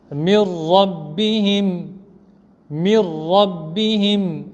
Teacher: Après un noun sakin, il y a un ra. On ne fera pas de ghunna. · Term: idgham sans ghunna